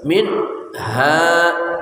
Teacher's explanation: nun mati bertemu ha dibaca jelas